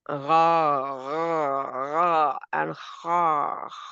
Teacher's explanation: Because this is a throat letter. The last part of your throat comes ha and ghain.